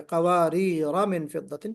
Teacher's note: جب وصل پڑھیں گے، کانٹینیو کریں گے، تو پھر الف بالکل بھی نہیں پڑھا جائے گا